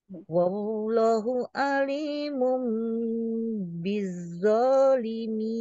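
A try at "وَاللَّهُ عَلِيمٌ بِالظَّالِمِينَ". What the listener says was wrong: Wallahnya panjang 2 rakaat.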